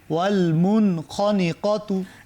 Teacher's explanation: এখানে মুন গুন্না হবে না, কারণ বাম দিকে কি আসছে? খ খ আসছে।